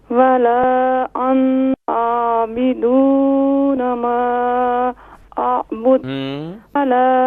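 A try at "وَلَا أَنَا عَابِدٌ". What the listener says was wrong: انا نون کو نہیں کھینچیں گے، ولا انا عابد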